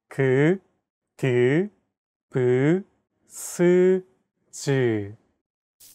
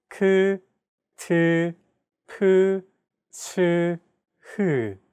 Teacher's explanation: Aspirated sounds are pronounced with a big burst of air, unlike plain sounds which do not have this quality. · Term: Aspirated consonant sounds